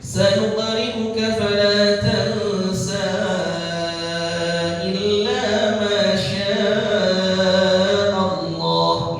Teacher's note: Jadi 4 harokat pada kalimat tansa kalau diwasl dengan ayat selanjutnya yaitu illa ma syaa Allah. Tapi kalau dibaca waqaf cukup 2 harokat.